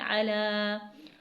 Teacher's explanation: کھڑی حرکت ہے تو اسے 1 حرکت کے برابر یعنی تھوڑا سا کھینچیں گے